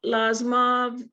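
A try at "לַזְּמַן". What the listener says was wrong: Lazman. There's a nun. Final nun. Lazman.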